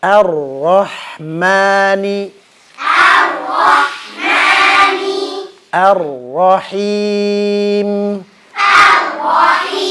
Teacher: ro sifatnya tawasud dan huruf yang memiliki sifat tawasud alirannya akan lebih jelas ketika dia tasydid atau sukun